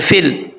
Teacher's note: فا کو جب لام سے ملائیں گے تو بیچ میں جو یا ہے یہ چھوڑ دیں گے، فا لام زیر فل، آگے لام کے بعد عین ہے، عین کو حمزہ نہیں پڑھنا، عقد، عقد، فی العقد.